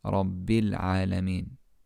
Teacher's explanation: the Hamztul-Wasl in Al-Alameen won't be pronounced